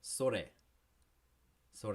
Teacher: it's not a hard r sound either it's kind of between the d and the l and the r sound